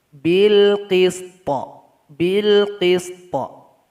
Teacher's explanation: jadi nanti kita kasih Qalqalah di akhir bunyinya